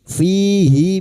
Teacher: fihi kasrah diikuti ya sukun dua harakat mad thabi'i